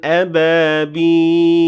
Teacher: But at the end of the third ayah, the word ended with fatha, so the only option that I have here is pure sukoon, and that's why I have to say ababil with sukoon at the end of the word